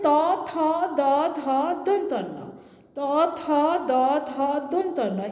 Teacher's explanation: এগুলো উচ্চারণ করার সময় আমাদের জিভ দাঁতকে ছুঁয়ে যাচ্ছে, তাই এগুলো হলো দন্তবর্ণ